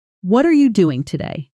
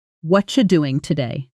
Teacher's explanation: But in fast natural speech, it often becomes something much closer to watcha doing today. With what are you compressing down into a quick blended watcha sound? · In careful textbook speech sounds exactly like that, word by word. But in fast natural speech, it often becomes something much closer to watcha doing today.